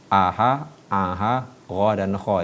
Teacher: keluarnya sama di tenggorokan satu kecamatan, yaitu keluarnya di tenggorokan ya.